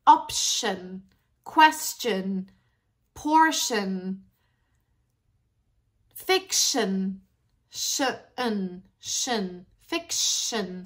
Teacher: so the shin contains a schwa